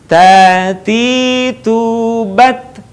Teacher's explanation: Perhatikan ada suara, ada udara yang mengalir ketika melafalkan huruf ta.